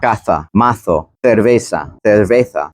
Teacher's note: One, they have that lisp, right? Where the S sound is not pronounced as sa, but tha